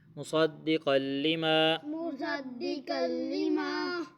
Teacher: صاد کو موٹا پڑھیں گے، قاف کو موٹا پڑھیں گے